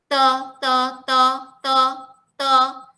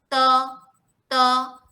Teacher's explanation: Sounds like T tapi dia tak angin keluar. Dia ke dalam. Te. Bila sampai ke T.